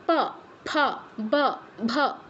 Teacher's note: এবার উষ্ঠ উষ্ঠ নাম শুনেই বোঝা যাচ্ছে ঠোঁট ঠোঁটে স্পর্শ করবে প বর্গের যখন অক্ষরগুলো উচ্চারণ করব আমাদের দুটো ঠোঁট একে অপরকে স্পর্শ করবে